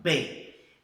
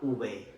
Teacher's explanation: Por exemplo, eu falo B e a UB é menos oclusiva, eu falo UB, tá vendo? Eu fecho menos a boca. Mas o som, no final das contas, é praticamente o mesmo, né?